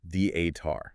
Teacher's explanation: The accent is heavily on the first syllable, the-a-tar.